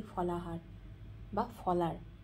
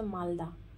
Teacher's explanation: দ্রুত বা সংক্ষিপ্ত উচ্চারণের ফলে যখন কোনো শব্দমধ্যস্থ হ বর্ণের লোপ ঘটে তখন হ লোপ বলে